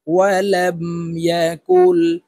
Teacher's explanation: এই কাফ তাশদি লাম কে ধরবে মাঝখানে জজমলা নুন বাদ পড়ে যাবে · ইয়া জবর ইয়া, কাফ লাম পেশ কুল, এই কাফ তাসদিদওয়ালা লামকে ধরবে, মাঝখানে জজমওয়ালা নুন বাদ পড়ে যাবে। কাফ লাম পেশ কুল, ওয়ালাম ইয়াকুল।